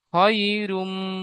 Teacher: ইয়ালিনকে নরম আওয়াজে তাড়াতাড়ি পড়তে হবে, টান দেওয়া নিষেধ।